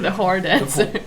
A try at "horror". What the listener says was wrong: The horror dancer. Horror. There's like a small wiggle at the end. Which isn't when we say whore. Horror. Horror.